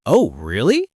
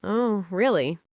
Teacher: >> If I say, I quit my job, you should respond with high surprised intonation. Oh, really? · That rising pitch on a really shows emotion. If you say it flatly, oh really, it sounds like you don't care.